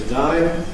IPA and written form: təˈdʌɪ (today)